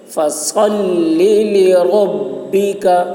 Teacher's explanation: فصلی میں صاد کو موٹی آواز میں، صاد کی آواز بہت سخت ہوگی. فصل لربک، ربک رو پر ہوگی.